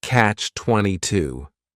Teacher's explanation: compound noun the word catch is just one syllable and then 22 is three syllables and the stress is on that final syllable